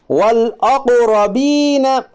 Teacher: الف کو نہ پڑھ کے لام کو ظاہر کر کے پڑھیے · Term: اظہار قمری